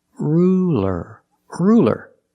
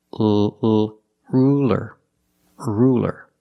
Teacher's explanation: it's a light L because it's between vowels.